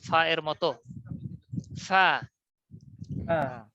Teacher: তাহলে এটাকে বলা হয় বাংলায় ফ আকার ফা এর মত ফা এটা উচ্চারণ হবে উপরের দাঁত আর নিচের ঠোঁট বাতাস চালু মুখে একটু হাসি ভাবে